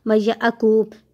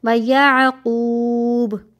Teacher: بنی و یعقوب، و یعقوب نہیں پڑھنا، آپ لازمی یہی پڑھتے ہوں گے و یعقوب، جبکہ آپ کیونکہ ہم عین کو حمزہ پڑھ لیتے ہیں اور قاف کو کاف پڑھ لیتے ہیں، جبکہ ایسا نہیں کرنا. آپ نے عین کو حلق میں سے نکالنا ہے اور قاف کو موٹا کرنا ہے